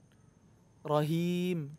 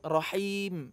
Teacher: hanya dari tengah kerongkongan bukan dari pangkal